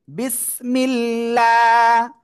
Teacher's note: আল্লাহ শব্দের লামের ডাইনে যদি জের হয় তাহলে আল্লাহ শব্দের লাম চিকুন করে পড়তে হবে, লয় আকারে লা।